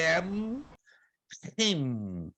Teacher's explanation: O M é bem labial, como o inglês am, him.